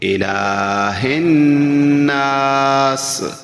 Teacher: الہ کا لام جو ہے اس پر کھڑی زبر ہے، وہ تھوڑا سا لمبا ہوگا